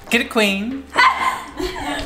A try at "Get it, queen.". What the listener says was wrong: You gotta raise the volume a bit.